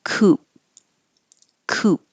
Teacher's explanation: And a style of car, Coupe, we don't pronounce the E and it sounds just like coop, like a chicken coop. And so you don't have to make the P at the end, just hold your lips.